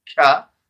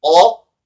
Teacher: So qaf, where the qaf come from again, it's far end of the tongue when it touches the palate